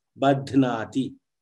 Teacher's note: the breath on the dhakara to make it a mahaprana. So during the pronunciation, I make the external effort, badhnati, and I make sure I pronounce it.